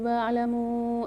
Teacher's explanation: وَعْلَمُوا میں میم کے ساتھ مد ہے اور واو ساکن واو مدہ بھی ہے، تو اس کو 4 سے 5 الف کی مقدار کھینچ کے پڑھیں گے